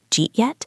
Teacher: The D and did and the Y and U combine to make a just sound, jeet.